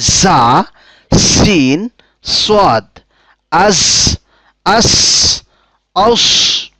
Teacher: জিহ্বার অগ্রভাগ এবং সামনের ২ দাঁতের মাথা এবং উপরের দাঁতের সামান্য অংশ মিলে উচ্চারিত হয় ৩টি হরফ